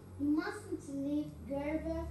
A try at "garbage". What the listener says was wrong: Garbage. ▁Yes.